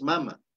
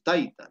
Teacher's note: la mayor fuerza de voz acentuación está en la penúltima sílaba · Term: graves